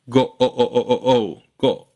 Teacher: in O as in go you just stay on that beginning O Part